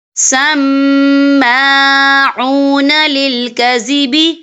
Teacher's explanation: یہاں میم مشدد ہے تو یہاں پر غنہ بھی ہوگا اور اس کے اوپر کھڑی حرکات ہے، تو ہم یہاں 2 یا 3 حرکت کے برابر کھینچے پڑھیں گے